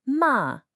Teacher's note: Right now for the second tone, this one goes up.